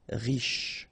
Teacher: Final not really pronounced, so sh is the last sound.